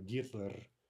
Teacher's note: there's no h sound in russian